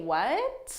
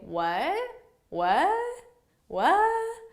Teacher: notice that the uh is higher in tone and it marks that intonation of a question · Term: rising intonation